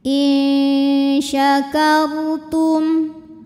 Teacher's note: sukun dibunyikan secara tafkhim karena huruf sebelumnya berbaris fathah cara membacanya kita tebalkan r-nya